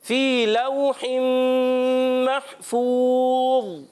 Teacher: یا مدہ ہے، ایک الف کھینچ کر ادا کریں گے. لو حرف لین ہے، واو لین ہے، واو لین کو نہیں کھینچتے، اس کو بغیر کھینچے نرمی سے پڑھتے ہیں.